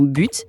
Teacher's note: Pour le son B, comme dans but, si on place une main sur sa gorge, on sent une petite vibration